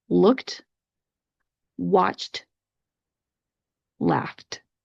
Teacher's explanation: If you listen closely, you can hear that little T sound that I'm putting at the end.